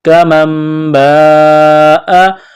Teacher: نون ساکن کے بعد با ہے، یہاں پر اقلاب کریں گے، یعنی نون کو میم سے تبدیل کرنا ہے، غنہ کریں گے، آواز ناک میں چھپائیں گے